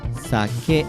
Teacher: the pitch accent of sake is the Heiban accent, in fact, so it should be pronounced sake